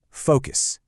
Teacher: The stress hits right on that first part. It's focus, not focus.